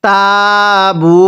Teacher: পেশের পরে ওয়াও সাকিন এক আলিফ টানতে হয়